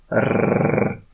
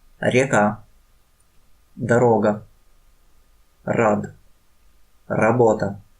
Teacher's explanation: When you say R, you should touch the roof of the mouth with the tongue. Important that the tongue must vibrate when you say R.